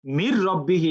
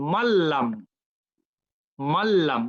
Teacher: র আর লাম আসলে গুন্না হবে না, এই কথা সত্যি, কিন্তু নুন কিন্তু ক্লিয়ার উচ্চারিত হবে না। নুন পরবর্তী লেটার র এবং লামের মধ্যে অ্যাসিমিলেটেড হয়ে যাবে, ওর কোনো এক্সিস্টেন্ট থাকবে না।